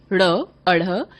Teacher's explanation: इनके उच्चारण में जीभ पहले ऊपर उठती है और फिर झटके के साथ नीचे गिरती है, इसलिए इन दोनों को उच्छित व्यंजन भी कहते हैं।